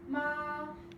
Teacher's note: for tone one we have ma which is a straight line